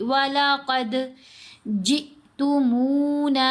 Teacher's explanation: جیم کو ہم حمزہ ساکن سے ملائیں گے تو جھٹکا دے کر پڑھیں گے